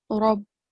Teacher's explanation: the letter ra should be pronounced with a broad and thick sound